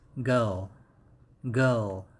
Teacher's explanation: And in American pronunciation, this word has R in the middle, so the pronunciation is girl, girl. However, in British, it doesn't have R sound in it